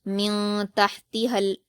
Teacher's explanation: میم پر حرکت جلد پڑھیں گے، نون پر جزم ہے اور نون ساکن کے بعد تا آیا ہے جو کہ حروف اخفا میں سے ہے، تو یہاں بھی نون ساکن کی آواز کو ناک میں چھپا کر غنہ کے ساتھ پڑھیں گے